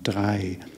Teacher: the R sound will need some practice, but it's more at the back of your throat rather than formed with your tongue